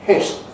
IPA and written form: hɪt̞ (hit)